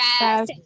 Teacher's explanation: First will be unstressed, second will be stressed, and third will be unstressed.